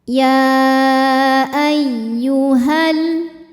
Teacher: Jika diwasolkan atau diteruskan, maka madnya ini gugur, ha-nya jadi pendek. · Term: takhallus bil hadfi